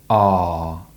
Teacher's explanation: the r sound is a long sound produced with the tongue low and back and the lips relaxed. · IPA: /ɑ:/